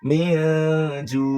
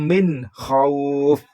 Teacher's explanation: Nah, ini kho ada. Nah, berarti tidak boleh dibaca dengung ya, harus dibaca jelas ya.